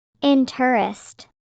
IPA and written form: ˈɪntrəst (interest)